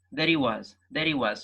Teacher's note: so the H in he is dropped out